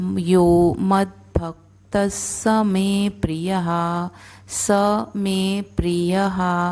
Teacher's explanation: अब यहाँ पर द पूरा दिख रहा है पर द हमें आधा बोलना है, भ पूरा बोलना है और त के बाद भी जो विसर्ग है उसका उच्चारण स होगा क्योंकि अगला जो शब्द है वो अक्षर है वो स है। तो यो मद्भक्तः स मे प्रियः, स मे प्रियः, हर एक अक्षर को पूर्ण रूप से बोलना है, कंप्लीट बोलना है।